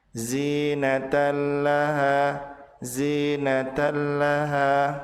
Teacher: Sementara tanwin berlembur ke huruf lam disebut sebagai idgham bila gunnah, yaitu meleburnya tanwin ke huruf lam tanpa disertai gunnah dan tanpa ditahan